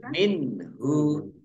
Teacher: Tapi kalau terus minhu, nun sukun bertemu dengan huruf h, bacaan izhar, dibaca jelas. Tapi kalau wakof dibaca antara nun dan ha, min.